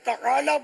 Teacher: تعالی عین حلق سے نکالنا ہوگا، تو یہ سب کا نکلتا نہیں ہے.